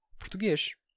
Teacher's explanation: na pronúncia portuguesa atual você tem vogais bem reduzidas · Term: redução vocálica